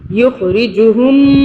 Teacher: میم کے اوپر تشدید ہے تو ہم یہاں پہ غنہ کریں گے 2 سیکنڈ کے لیے